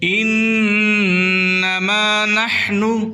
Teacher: حا کو حلق سے نکالیں